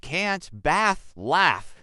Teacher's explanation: In American English, this is a flat A sound like in cat.